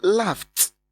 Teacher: Look at the ED in that spelling. ED produces t because it follows f, which is a voiceless sound.